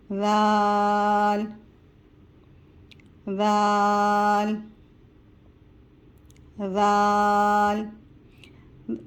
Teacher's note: जबान की नोक दांतों के सामने वाले ऊपर के सामने वाले दो दांतों के किनारों से टच करके पढ़ेंगे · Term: नरमी वाला हर्फ